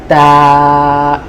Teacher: তা উচ্চারণ করার জন্য আপনার জিহ্বার আগাটা ঠিক উপরের দাঁতের গোড়ায় লাগান। জিহ্বার আগা উপরের দাঁতের গোড়ায় স্পর্শ করুন আর বলুন তা।